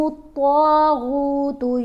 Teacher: طا اور غین دونوں کو پر پڑھیں گے، موٹا پڑھیں گے